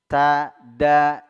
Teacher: makhrajnya satu jenis, yaitu ujung lidah bertemu dengan tempat tumbuhnya gigi seri atas, dua gigi seri atas